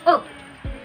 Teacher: it is a closed mid-rounded vowel pronounced as U